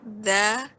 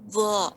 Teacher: bedanya di sini ketika za pangkal lidah tidak naik. Ketika wo pangkal lidah naik, ya, ditambah dengan menaikkan pangkal lidah.